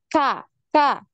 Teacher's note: maka ketika kita mengucapkan huruf Kaf ini seperti ada suara desisan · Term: hams